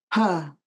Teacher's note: when we make the P sound, we put our lips together and make a small puff of air